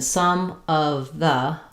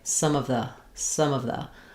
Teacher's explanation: So my m of some kind of links to my schwa of of some of the um one of the etc. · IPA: /ə/